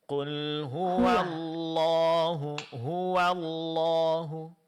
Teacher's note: pada huruf waw masih agak ketebalan ya, agak tebal ya. Lebih ditipiskan lagi Bu.